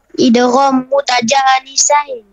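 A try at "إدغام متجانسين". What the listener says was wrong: Nisain lah, bukan nisan. Nisan tu kereta ataupun batu. Batu nisan. Ni nisain. Idgham mutajanisain.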